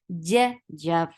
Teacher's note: Ja from your middle part of your tongue, and there shouldn't be any ch sound into it.